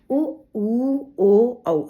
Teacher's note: इसमें ओठ जो है वो गोल बन जाते है